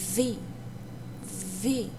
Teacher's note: os dentes superiores se pressiona no lábio inferior